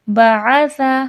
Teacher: بعث سا نرمی کے ساتھ پڑھا جائے گا، با آ سا تینوں پہ زبر ہے، حرکات بغیر کھینچے بغیر جھٹکا دیے